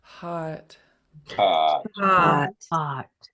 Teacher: you're going to make it long and low it's going to last a nice long time